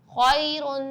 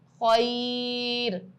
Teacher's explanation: رواں میں ہم نرمی اور جلدی کے ساتھ پڑھیں گے, لیکن وقف میں ہم اس کو کھینچیں گے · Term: حرف لین